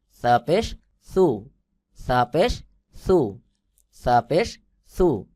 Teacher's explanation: পাতলা করে জিহ্বার আগা সামনের দুই দাঁতের আগার সঙ্গে লাগাইয়া বাহিরের দিকে হালকা বাতাস বের হবে